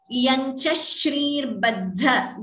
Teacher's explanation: again that sh is doubling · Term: dvitvam